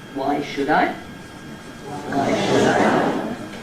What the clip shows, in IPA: ˌWhy ͵should I